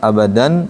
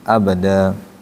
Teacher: Mad iwad itu saat berhenti di fathatain. Kita panjangkan abadan jadi abada.